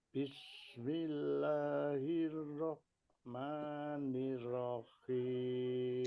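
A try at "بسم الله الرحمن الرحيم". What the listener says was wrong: Heeh bagus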